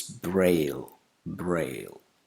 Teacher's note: We don't have to affix an extra vowel sound at the end of this word.